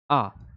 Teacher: अब विवृत स्वर आ जाइए। इसके उच्चारण में मुख सबसे अधिक खुलता है